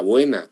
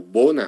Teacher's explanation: fíjense la diferencia tan radical que hay entre el español y el portugués el español diptongo el portugués no diptongo